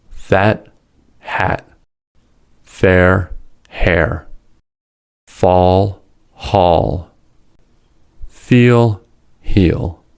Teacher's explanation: Fa and ha are voiceless fricatives. They differ in the way air escapes from the mouth.